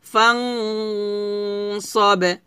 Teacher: গুন্নাটা পাতলা হবে না কারণ নুন সেকেন্ডের পর সদ আসছে আর সদ যেহেতু মোটা হরফ তো গুণ মোটা করতে হবে